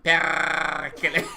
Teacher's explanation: the emphasis must be on the first syllable. And rolling the R is a must.